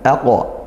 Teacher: di sini ada qaf sukun dipantulkan